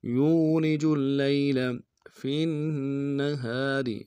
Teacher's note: یولج اللیل، فی النہار، فا کو نون کے ساتھ ملانا ہے، نون کے اوپر تشدید زور دیں گے، اور ہا کے ساتھ الف مدہ ہے، ایک مقدار میں کھینچیں گے، را کو باریک ادا کریں گے · لام کو یا کے ساتھ ملانا ہے، یا لین بغیر کھینچے پڑیں گے